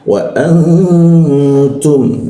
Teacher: nun mati bertemu ta itu didengungkan, dibaca 2 ketukan